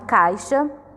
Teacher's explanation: você vai ver que a vogal que a gente coloca mais força para pronunciar é o A. Então, o I sempre é a semivogal.